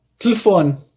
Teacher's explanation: Um português provavelmente vai pronunciar essa palavra algo como telefone. Você não ouve o primeiro E, tá? Você não ouve o segundo E. · No português europeu, existe uma regra fonológica que determina que todas as vogais pré-tônicas, ou seja, vogais que aparecem numa palavra antes da sílaba tônica, devem ser apagadas, não são pronunciadas